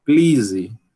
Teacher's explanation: Um P aspirado, um L desvozeado, um I longo